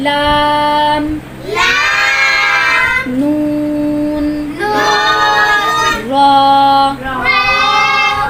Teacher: ऊपर वाले तीन दांतो के मसूड़ों से जुबान को जुबान के किनारे की पुछ को लगाना है